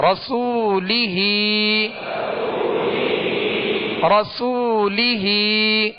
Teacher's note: لہذا اس کو کھینچیں گے، ہا کے نیچے کھڑا زیر ہے، ہا کو بھی ایک الف کی مقدار یعنی 2 حرکت کے برابر کھینچ کر ادا کریں گے